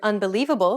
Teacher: When you say the word unbelievable, for example, do you notice how the li is accentuated? That's because it's pronounced longer and louder than any other syllable in the word, and this is what we refer to as stress.